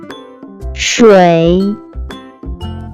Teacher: First character is pronounced with third tone.